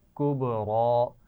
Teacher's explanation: با پر قلقلہ ہے اور را پھر موٹی ہے